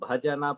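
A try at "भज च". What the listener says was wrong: Third line is bhajacha, not bhajana, bhajacha matsayujyam bhajasa punarit yanva grihna. cha ch.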